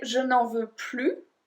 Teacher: If you say je n'en veux plus, I don't want it anymore, it's a negative thing. You don't want it anymore. Well, then we don't pronounce the S.